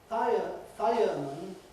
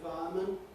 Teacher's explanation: what one is saying when she/he says [ˈfaəmən] is probably some sort of diphthong. You’re losing the [ɪ] element